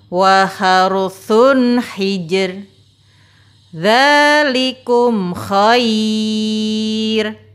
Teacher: Cara membaca ra yang kedua, yaitu tarqiq, dibaca tipis.